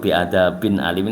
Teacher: Ini idhar yang halki. Halki itu di kerongkongan nih, jelas di kerongkongan gitu.